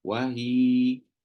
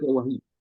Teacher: Ya tu asli memang baris fathah, tapi bila berhenti maka matikan ya dan sebelum dia baris bawah maka berhenti dah 2 harakat macam mat asli.